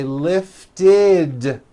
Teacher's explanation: we add the ending id, which is a vowel I followed by a D, which is voiced.